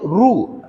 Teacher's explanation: ரூ சொல்லும்போது ரூ இதழ் வந்து அப்படியே குவியும்